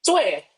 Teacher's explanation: Zue, on the other hand, needs a mark, which is the falling tone mark, the one that's pointing downwards, right? The falling tone, which is very similar to the Mandarin fourth tone.